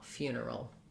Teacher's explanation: Again, a schwa before my final L